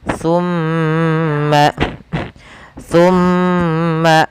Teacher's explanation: Apabila ada nun tasdid dan ee mim tasdid, maka ia kita tahan dan kita masukkan ke rongga hidung kita pelafalannya. Tumma tumma sambil ditahan dua harakat. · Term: ghunah